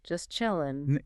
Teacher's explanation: especially at the end of words before another consonant, like in just chilling, the T in just often gets dropped. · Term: elision